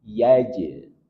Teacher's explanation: Ada jim yang sukun dan di tengah kata, maka hukumnya qalqalah surah. Pantulannya tidak terlalu nampak. Yaj'al. Kemudian dalam sukun maka berikan dia tawassut atau bainiyah, sedikit mengalir.